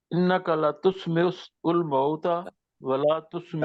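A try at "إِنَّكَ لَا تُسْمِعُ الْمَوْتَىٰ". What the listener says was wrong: تسمع الموت، لا کو لمبا رکھیے.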